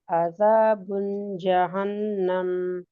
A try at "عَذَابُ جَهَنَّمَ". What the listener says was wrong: عذاب جہنم ایک پیش ہے بیٹے.